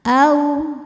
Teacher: Au ada harful lin karena ada wawu sukun didahului baris fathah, maka dibacanya lembut.